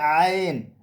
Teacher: عین کا مخرج ہے وسط حلق. یعنی حلق کے درمیان سے عین ادا ہوتا ہے